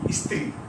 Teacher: এবারে দেখো আমরা লিখি স্ত্রী, দন্তস্বয় তয়রা ফলা দীর্ঘইকার, কিন্তু আমরা উচ্চারণ করি কি স্ত্রী, একটা ই চলে আসে উচ্চারণ করতে গিয়ে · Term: আদি স্বরাগম